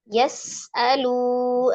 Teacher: sifatul huruf sinnya ada alhams udara mengalir, raghah suaranya juga mengalir, kemudian memiliki sifat khusus as-safir desis ya